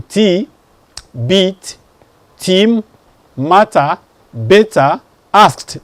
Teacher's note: Then I have the t, that's voiceless.